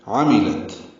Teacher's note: عین وسط حلق سے ادا کریں گے، آخر میں تا ساکن بہم سے